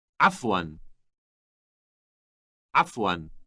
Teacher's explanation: note that the first sound is produced in the throat